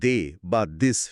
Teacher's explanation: এখানেও জিভের অবস্থান একই থাকে, কিন্তু বাতাস বের করার সাথে সাথে গলার স্বরযন্ত্রটা কাঁপে। ফলে উচ্চারণটা অনেকটা দয়ের মতো হয়। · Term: ভয়েসড বা ঘোষ